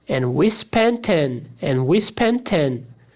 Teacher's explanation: Cortei esse T também, porque a palavra 10 já começa com T. Então não preciso de 2 T's aqui na minha pronúncia, senão eu vou quebrar a minha fala.